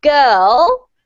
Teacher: You can see when I say girl that the R just comes from the back of my mouth. There is no R sound.